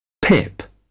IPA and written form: pɪp (pip)